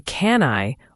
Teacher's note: The can I often sounds like can I. The N connects directly to the I